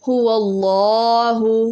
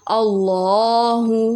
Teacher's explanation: اور یہاں پر لفظ اللہ ہے، جیسے کہ ہم نے نورانی قاعدے میں اللہم لفظ پڑھا تھا، اور وہاں پہ میں نے آپ کو بتایا تھا کہ جب لفظ اللہ سے پہلے زبر آ جائے تو لفظ اللہ کا جو لام ہوتا ہے اس کو موٹا یعنی پور کر کے پڑھا جاتا ہے